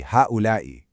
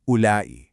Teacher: He completely drops the ha.